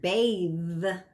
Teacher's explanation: like in the word uh bath right versus the f okay the voiced th where vocal chords are vibrating the v that you hear in the word bathe right that